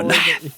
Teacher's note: I think this accent was on the second syllable.